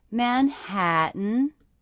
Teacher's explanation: Again, my voice went up at the end.